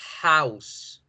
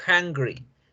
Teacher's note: Y fíjense cómo el aire pasa, raspa la garganta, pero no genera vibración. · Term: consonante glotal